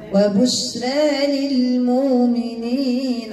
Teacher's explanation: وبشرى هذه من دوات الراء فيها التقليل وجها واحدا والراء مرققة بسبب ألف الممال بعد الراء